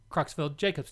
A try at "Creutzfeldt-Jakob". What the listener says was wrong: It looks like Jacobs, but it's Jakobs. The scientist it was named after was German, so the J is pronounced like a Y, but yeah.